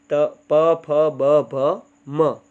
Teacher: ત્યારબાદ આ જે પ છે, પ, ફ, બ, ભ, મ, એ છે તે ઓષ્ઠ્ય છે. એટલે કે આ જે બોલીએ ત્યારે હોઠ છે તે ભેગા થાય છે.